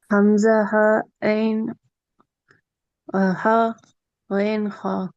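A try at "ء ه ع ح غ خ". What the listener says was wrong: احسنتی, good.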